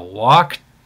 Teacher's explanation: when a verb ends in a K, and it's a regular past tense verb with an ED ending, you want to exaggerate the T sound